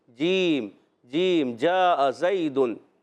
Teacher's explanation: جیم کی ادائیگی ہوتی ہے وسط زبان وسط تالو سے